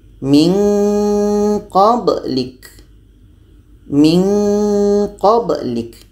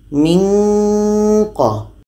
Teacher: maka nun mati bertemu qa ini akan menghasilkan bunyi nge. Min qa. Karena qa dan ka ini letaknya pada pangkal lidah, maka nanti akan menghasilkan dua-duanya untuk qa dan ka ini bunyi nge. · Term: ikhfa ab'ad